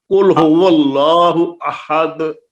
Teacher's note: احدن میں 2 پیش کی تنوین ختم ہو جاتی ہے، دال ساکن پڑی جائے